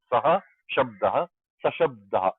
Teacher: This is visarga lopa. Visarga goes missing here.